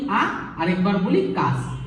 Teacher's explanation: এই আকাশ শব্দটা উচ্চারণ করতে গিয়ে আমরা দুবার ঝোঁক দিই। কিরকম, একবার বলি আ আর একবার বলি কাশ। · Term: দুটি দল